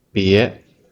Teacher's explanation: give it a second tone